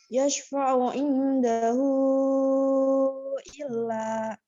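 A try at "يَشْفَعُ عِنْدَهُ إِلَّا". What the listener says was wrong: Nah, ini udah lumayan ya, udah lumayan.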